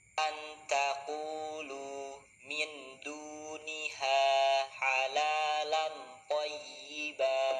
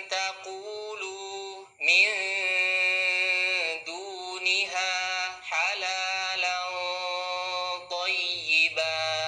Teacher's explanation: Cara bacanya, suara nun sukun atau tanwinnya disamarkan dan ditahan dengan dengung sambil kita bersiap-siap menyebut huruf berikutnya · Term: ikhfa hakiki